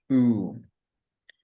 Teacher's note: The next vowel sound is oo, which area is back, the tongue position is high, the lip shape is rounded, and the muscle tension is tense.